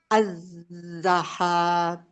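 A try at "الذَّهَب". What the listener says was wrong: Ah, jangan dipanjangin H-nya langsung putus.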